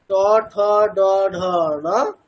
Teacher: ট, ঠ, ড, ঢ ঠিক যেখানে জিভটা টাচ করছে আমাদের, অর্থাৎ উপরের যে প্লেটটা আছে তার পিছন দিকে মূর্ধাতে, ঠিক ওই মূর্ধা থেকেই নকারটাকে বলতে হবে। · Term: মূর্ধন্য নকার